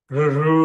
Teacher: ఎక్కడైతే ట అంటున్నామో అక్కడ నాలుక పెట్టి ర్ అనాలి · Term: మూర్ధన్య